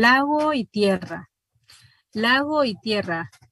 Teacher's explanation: lago y tierra se convierte en un diptongo decreciente y la iv debe señalarse como una semi vocal y marcarse · Esa es una frase, pero si dice lago y tierra, entonces va a sentir que la O y la I se unen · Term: sinalefa